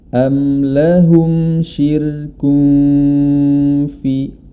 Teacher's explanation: huruf ro nya dibaca tipis karena didahului oleh huruf yang berharakat kasrah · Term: ro tipis